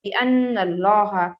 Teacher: یہاں پر ہم نون میں غنہ کریں گے 100%، اور اس کے بعد لفظ اللہ آیا ہے، اور چونکہ لفظ اللہ سے پہلے والے حرف کے اوپر زبر آیا ہے تو اسے ہمیں موٹا پڑھنا ہے. اللہ کو موٹا پڑھنے کو کہا جاتا ہے تغلیظ.